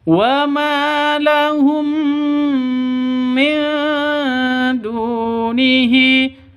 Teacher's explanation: Cara bacanya masuk ke mim disertai dengung karena bacaan idgham mimi atau idgham mislain.